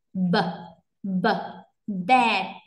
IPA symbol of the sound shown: b